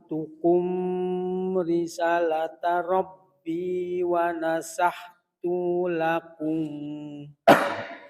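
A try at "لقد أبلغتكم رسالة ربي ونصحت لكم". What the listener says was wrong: tu-nya pendek. Risa sanya panjang. Risa sanya panjang.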